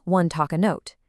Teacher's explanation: even though O is a vowel, the word one starts with a hard wa consonant sound